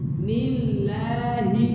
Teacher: Tipis. Lamnya tipis. Lafaz Allah di sini tipis. Nillahi. Kemudian yang terakhir fa ya.